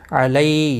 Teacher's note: یا لین ہے، تھوڑا نرمی کے ساتھ کھینچ کر ادا کریں گے